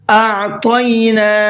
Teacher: اعطینا، یہاں پر دیکھیے حمزہ کا ساؤنڈ الگ ہے اور عین کا ساؤنڈ الگ ہے، دونوں لفظ الگ الگ ہیں، دونوں کے ساؤنڈ بھی الگ ہونے چاہیے، دونوں کی آواز بھی الگ ہونی چاہیے۔ پہلے حمزہ ہے پھر عین ہے، عین کو حلق سے نکالیں گے اور حمزہ کو منہ سے نکال کر کے پڑھنا ہے۔ آتینا، آتینا نہیں پڑھنا ہے، عام طور پر جو غلطی کرتے ہیں لوگ وہ کرتے ہیں آتینا یا آتینا، ان کو پتہ ہی نہیں حمزہ اور عین کا ساؤنڈ ایک ہی کر دیتے ہیں۔